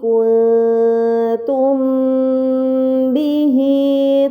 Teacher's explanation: Pada kata kuntum bihi ini dinamakan mad sillah sughra karena dhamir sebelum dan sesudahnya itu bukan sukun, maka dibaca panjang selama 2 harokat